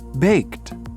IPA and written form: beɪkt (Baked)